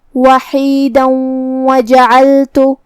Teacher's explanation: اگر ہم یہ آیت کو اگلی آیت کے ساتھ ملا کے پڑھے تو حرف الواو کلمت وجعلت میں حروف الادغام میں سے ہے، تو ہم یہ تنوین کو واو میں ملا کے غنہ اور تشدید کے ساتھ یہ حکم کو ادا کریں گے